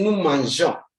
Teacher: When look at the nous mangeons, there's an E there. The E does not sound to say nous mangeons, like how some people pronounce it. But you say nous mangeons, simply because the G is before a vowel like O.